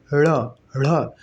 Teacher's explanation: उत्क्षिप्त इसलिए कहते हैं क्योंकि इसको बोलते हुए ढ़ जिह्वा जो है ऊपर तेजी के साथ मूर्धा को टच करती है, उसके बाद नीचे छिप जाती है, नीचे बहुत तेजी के साथ गिरती है जिह्वा, इसीलिए इसको उत्क्षिप्त कहते हैं।